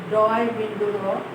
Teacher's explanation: ডয় বিন্দু র, এটি আমাদের উচ্চারণের সময় আমাদের জিহ্বার অগ্রভাগ একটু উপরের দিকে উল্টিয়ে গিয়ে দাঁতের আমাদের উপরের পাটির দাঁতের নিচে স্পর্শ করে একটা তাড়নার সৃষ্টি করে।